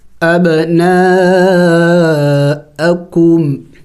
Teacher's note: با حروف قلقلہ میں سے ہیں، قلقلہ کریں گے یعنی ہلا کے پڑھیں گے